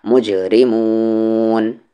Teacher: جیم ساکن ہے تو قلقلہ ہوگا، را کی ساؤنڈ نیچے جا رہی ہے تو یہ لائٹ ہوگی